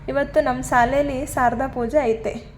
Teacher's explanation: ಮದ್ದೂರು ಚನ್ನಪಟ್ಟಣದಲ್ಲಿ ಶಕಾರ ಶಂಖ ಶಕಾರ ಸ ಕಾರವಾಗಿ ಉಚ್ಚಾರಗೊಳ್ಳುತ್ತದೆ